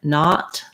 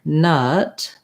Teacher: if I'm saying the schwa, like nut, my tongue is central and relaxed. My jaw is not very open.